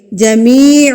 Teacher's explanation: یا ساکن، یہ والی علامت یا کے اوپر آ گئی تو یہ یا ساکن بن گیا، اور اس سے پہلے اگر زیر آ جائے تو یہ یا مدہ کہلائے گا، اور اس کو ہم ایک حرکت کے برابر کھینچ کے پڑھیں گے